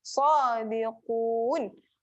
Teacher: Qaf tebal. Tekan dekat pangkal lidah. Un. Okey, 2 harakat.